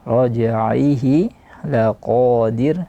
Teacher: Ala raj'ihi diqalqalahkan, jimnya qalqalah di sini. Raj'ihi laqadir, dan ra yang terakhir adalah tipis, tidak boleh tebal.